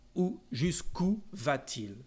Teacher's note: we need our euphonic T between the two vowels just to improve the pronunciation